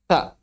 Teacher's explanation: tahan kita laju udara di ujung lidah yang bertemu ujung gigi seri atas